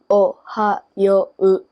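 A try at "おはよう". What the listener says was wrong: See the oo? We don't hear that oo. The Ohayou. We don't hear that oo.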